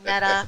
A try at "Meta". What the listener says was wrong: Meta, not MITA.